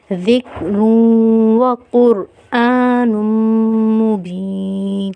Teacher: جب دو زبر کی تنوین کے بعد حرف واو مشدد حالت میں آئے گا تو ہم کیا کریں گے، غنہ کریں گے